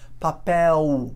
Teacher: no final da palavra no português, você tem papel, você faz um U